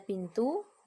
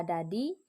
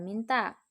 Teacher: Bunyi apikodental yaitu bunyi yang dihasilkan oleh keterlibatan ujung lidah, apex, dan gigi dentum atas. Caranya, ujung lidah sebagai artikulator menyentuh gigi atas sebagai titik artikulasi